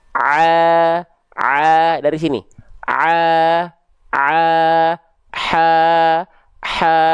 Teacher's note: Dari wastul halqi, tengah tenggorokan. Ya, kalau bahasa medisnya tengah tenggorokan ini nama organnya katup epiglotis. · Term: ain dan ha kecil